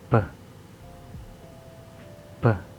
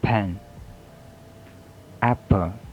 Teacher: There is voiceless bilabial stop. The example word are pen, apple.